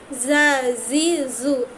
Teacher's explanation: আর ঝা যেটা, এটা হচ্ছে জিহ্বার আগের নিচের দুই দাঁতের মধ্যখানে লাগে